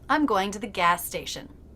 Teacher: Even though in writing, gas station is 2 words. It's not gas station with 2 separate S's. It's gas station. One S connecting the two words.